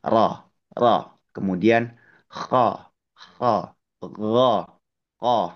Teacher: arah vokal kita itu diarahkan atau dibelokkan ke arah langit-langit mulut